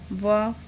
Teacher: दंत ओष्ठ से व, फ का उच्चारण होता है।